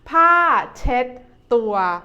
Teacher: We see the nice and clean towel, or in Thai we say ผ้าเช็ดตัว ผ้าเช็ดตัว ผ้า is a falling tone. เช็ด the second syllable is like when you say check in English, but you change the K sound into a D sound.